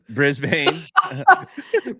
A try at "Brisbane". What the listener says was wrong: don't say the a Brisbane brisb there you go that's great just skip the a